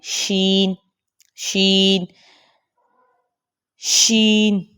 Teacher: تفشی کہتے ہیں پھیلانے کو، آواز کا منہ میں پھیلنا۔ آپ نے دیکھا ہوگا جب بھی ہم شین پڑھتے ہیں تو پہلے ہم اس آواز کو پھیلاتے ہیں، پھر ہی ہم شین کو پڑھتے ہیں۔ · جب آپ شین پڑھتے ہیں، شین شین شین، تو کیا محسوس کر رہے ہیں کہ زبان کا جو بیچ کا حصہ ہے وہ اوپر کے تالو کے ساتھ نہیں لگ رہا